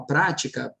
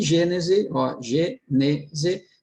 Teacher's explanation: ela é uma proparoxítona, sílaba tônica na antepenúltima sílaba